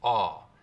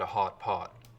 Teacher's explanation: one thing you hear a lot up here is a lip-rounded vowel for it, aw